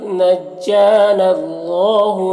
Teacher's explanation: یہاں پر اللہ کے لام سے پہلے نون میں زبر ہے تو اللہ کے لام کو پر پڑھیں گے